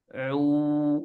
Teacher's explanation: Ain pun huruf ini keluar dari tenggorokan, bukan dari hidung. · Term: makhraj ain